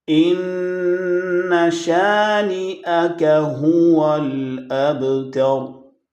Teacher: ان شانئک هو الابتر، با ساکن حروف قلقلہ میں سے آواز اب، نٹ اب یہ قلقلہ کی ساؤنڈ ہوتی ہے۔ تو را ساکن پڑھیں گے، را کو موٹا کریں گے